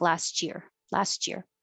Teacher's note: Last, it's very small space and it makes the T. But if your tongue is a little flatter, last, it kind of gets fuzzy and makes a sh before it stops the airflow to make a cha. And it will sound like last year, last year.